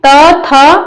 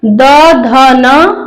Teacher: त वर्ग में त थ अघोष के अंतर्गत द ध न ये सघोष के अंतर्गत आएगा